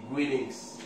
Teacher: In American English they say greetings. Greetings. The T sound like the D.